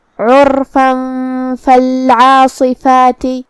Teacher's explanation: را پہ جزم ہے اور اس سے پہلے والے حرف پہ مطلب عین پہ پیش ہے تو ہم حرف الرا کو بھاری آواز میں پڑھیں گے · آخر میں فا پہ جو کہ تنوین زبر ہے، اگر ہم یہ آیت کو اگلے آیت کے ساتھ ملا کے پڑھیں تو جو کہ حرف الفا کلمت فالعاصفات میں حروف الاخفاء میں سے ہے اور اخفاء کا معنی ہے چھپا دینا، تو ہم یہ تنوین کو چھپاتے ہوئے لیکن غنہ کے ساتھ یہ حکم کو ادا کریں گے · کلمت عرفہ میں یہاں حرف العین کو ہم حلق کے درمیان والے حصے سے پڑھیں گے